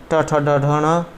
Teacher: जो आपके ट्वरक हैं ट ठ ड ढ ण, तो ये आपके सभी मूर्धा से बोले जाते हैं